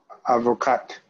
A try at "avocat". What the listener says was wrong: Avocat. We don't say avocate. We don't say avocat. We don't say avocat. No, avocat. With or without S.